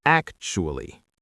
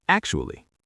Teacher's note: You want your pitch to rise slightly on the first syllable. It should sound friendly and light. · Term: intonation